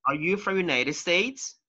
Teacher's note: so your intonation goes up